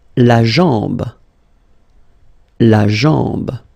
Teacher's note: A-M, when you combine these two, basically it's just like A-N, so it's nasal and it's en.